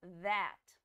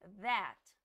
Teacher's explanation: fica um som meio lembrando uns Z olha that a língua dá até uma tremidinha quando você tiver falando